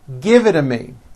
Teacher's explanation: when T's fall between two vowels they become voiced and are pronounced as D's